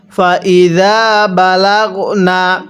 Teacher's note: জালটা নরম করে এক আলিফ টান দিব।